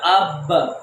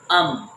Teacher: اب با پر ہم نے آواز کو چھوڑ دیا، میم پر آواز کو نہیں چھوڑیں گے. ام، اپنی میم کو، اپنی آواز کو روک لیں گے.